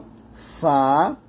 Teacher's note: তারপর হচ্ছে হরফে ওয়াসতি, অর্থাৎ ঠোঁট থেকে আমরা উপরে দুই দাঁত নিচে ঠোঁটের পেটে লাগিয়ে ফা উচ্চারণ করব